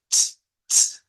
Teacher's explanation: lo que se escribe con Z en alemán se pronuncia con un africado TS